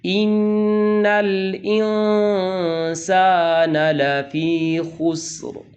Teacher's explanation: الف مدہ کے بعد نون غنہ نہیں ہے بلکہ صرف الف مدہ ہے، اور اس کی آواز جوف دہن میں ختم ہو جانی چاہیے